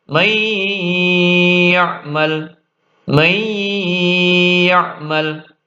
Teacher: nun sukun atau tanwin lebur ke huruf selanjutnya, yaitu wawu ya nun mim, dan dibaca dengung yang lama. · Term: idgham bi gunnah